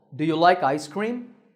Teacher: This sentence has a rising tone because my voice goes up